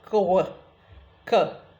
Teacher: that is a velar plosive followed by W, a bilabial approximant